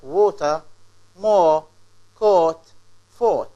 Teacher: push your lips forward make them round oh oh this is long vowel or long sound